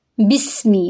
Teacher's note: بسمی، با کو سین سے ملائیں گے، سین میں سیٹی کی آواز آئے گی، میم کی زیر کو لمبا نہیں کریں گے۔